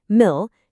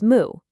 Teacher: Then the second part mil gets simplified. The l sound just drops away and it becomes moo.